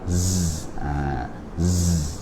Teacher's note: Kalau zai bunyi siulan ataupun bunyi unggasan ketika menyebut dia, bunyi lebah.